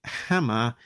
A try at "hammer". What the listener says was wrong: Hammer, not Hama.